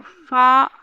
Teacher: फा ओष्ठ ही है महाप्राण अघोष में